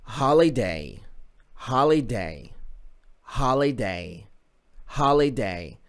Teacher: هذا البيتش تشوفه يرتفع وينزل، النبرة الصوتية ترتفع وتنزل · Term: stress